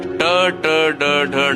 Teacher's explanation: ನಾಲಿಗೆಯನ್ನು ಸ್ವಲ್ಪ ತಿರುಗಿಸಿ ಹೇಳುವಂತಹ ಶಬ್ದಗಳು